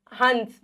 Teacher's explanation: न की ध्वनि आएगी, न की ध्वनि, हंस, ये अनुस्वार बोलते हैं बच्चों इसको, है ना। हंस, न की ध्वनि आती है नाक से।